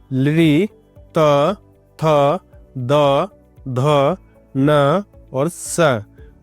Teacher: यह दंतीय होते हैं। दांतों के द्वारा इनका उच्चारण किया जाता है।